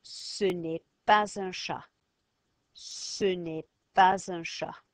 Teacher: That S is no longer silent. It's going to be sounded. Why? Because that silent letters can be sounded when followed by a vowel.